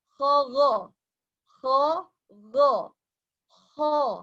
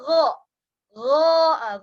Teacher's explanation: Kalau kho tadi keluar nafas, go tidak boleh keluar nafas.